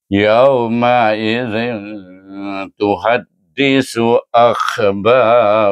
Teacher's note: Bertemu dengan ta sama juga. Iaitu dibaca dengan ikfa hakiki kubra dengan dengung dua harakat. cenderung bacaan itu ialah kepada izhar.